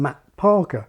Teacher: the T in Matt Parker which isn't much more than a brief silence